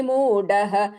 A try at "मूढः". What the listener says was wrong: மூடஹ ढ கொஞ்சம் ட்ரை பண்ணுங்க.